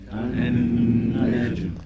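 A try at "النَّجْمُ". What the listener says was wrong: Qalqala. Jeen, sukoon, right? So we should have that little pop. So it should sound like this. An-najmu.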